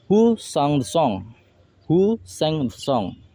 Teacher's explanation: So the song word song in this sentence given a fall intonation is because this sentence emphasizes of WH type of question.